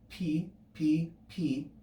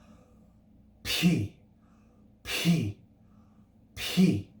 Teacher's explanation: p if we're if we pronounce it more correctly is simply the simple labial mute with aspiration or breath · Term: rough breathing